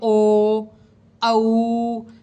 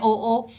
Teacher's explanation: ओ, औ, कंठोष्ठ, ये तो कंठ से बोले जाते हैं, आप बोल के देखिए ओ, औ, कंठ से, कंठ और ओष्ठ, ओष्ठ की भी शेप बनती है ओ, जब बोलते हैं तो ओ का राउंड शेप हो जाती है होठों की भी, तो कंठ और ओष्ठ दोनों को मिलाकर बोला जाता है